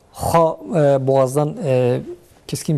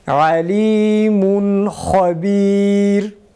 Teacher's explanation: Ha boğazdan keskin bir şekilde çıksın.